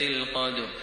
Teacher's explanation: ألاحظ حرف الدال ساكنا في الآية الأولى وقد جاء في وسط الكلمة، فيكون حكم التجويد فيه قلقلة صغرى